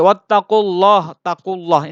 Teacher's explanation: Ini Allah sebelumnya berharakat lafadz jalalah sebelumnya berharakat fathah atau dhammah, namanya tafhim, tebal dibacanya